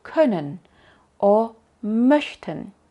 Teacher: con la lengua en la posición de la e corta y con los labios formados como para decir una o